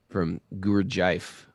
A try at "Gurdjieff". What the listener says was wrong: It's not guru.